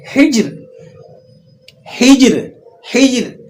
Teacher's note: وقف کی حالت میں ہجر، ہجر، آپ نے اس را کو باریک پڑھنا ہے، ہجر، اسے موٹا نہیں پڑھیں گے، ٹھیک ہے۔